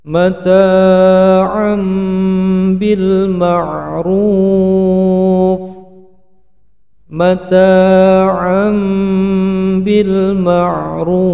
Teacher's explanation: Ada iklab berbunyi huruf mim panjangnya dua harokat